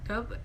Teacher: Dob di sini termasuk qalqalah sughra karena di sini terdapat huruf qalqalah yaitu ba